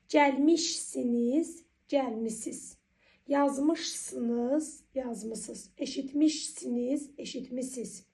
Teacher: Mış şəkilçisi ikinci şəxsin təkinə və cəminə qoşulanda tələffüzdə mış şəkilçisinin ş samiti düşür.